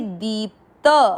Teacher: दी पे बड़ी ई की मात्रा लंबा खींचना है और दी के साथ आधा प, दीप, त में अ मिक्स करेंगे।